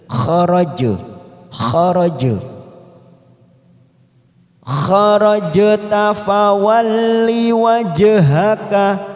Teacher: Harusnya di situ warnanya biru karena bacaan qalqalah sugro. Qalqalah sugro karena mati di tengah kalimat, maka kita pantulkan kecil.